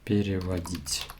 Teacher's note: Here the stress is on the ending.